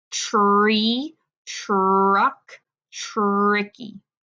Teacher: Now you might think it sounds like but it doesn't It's not ch. It's actually tr. There's that R in there.